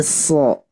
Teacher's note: Jadi huruf sod itu sin tapi versi tebal